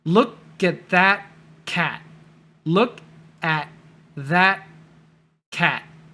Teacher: So no T sounds, just stop, stop, stop.